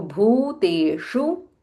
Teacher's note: Bha is Mahaprana and Dirgha